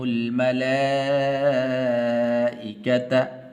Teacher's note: بڑی مد ہے، 5 الف کے برابر اس کو لمبا کیا جاتا ہے